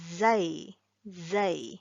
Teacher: Okay, so the letter zai, it is articulated in this area. Okay, the tip of the tongue touches the edge of the front two incisors, the front two teeth. Okay, so that you make sure that the tip of the tongue touches this area, this front two incisors, and we make the sound zai, zai.